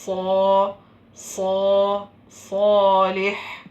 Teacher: സ്വാദിൻ്റെ മഹ്റജിൽ ചുണ്ടില്ല, അപ്പോൾ ചുണ്ട് ഉപയോഗിക്കേണ്ട ആവശ്യമില്ല. അങ്ങനെ. ഇനി അടുത്തത് ഇൻഷാ അല്ലാഹ് ഹുറൂഫുൻ നുത്ഇയ്യ എന്താണെന്ന് നോക്കാം.